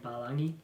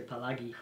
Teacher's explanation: Instead of saying palangi, they'd say palagi, which the G makes an NG sound.